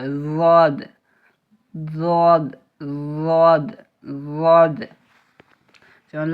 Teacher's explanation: জিভের কিনারা এবং তার বরাবর উপরের মাড়ির দাঁতের গোড়ার সাথে লাগিয়ে উচ্চারিত হয়